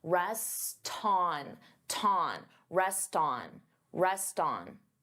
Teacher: I'm linking the two words together and I'm transferring the T sound onto the vowel.